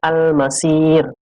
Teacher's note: Alasannya mad tabi'i dibaca waqaf. Cara membacanya, suara si dipanjangkan hingga 6 harokat. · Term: mad arid lis sukun